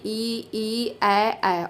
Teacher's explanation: अग्रस्वरों के उच्चारण में जिह्वा मुंह में आगे की ओर जाती है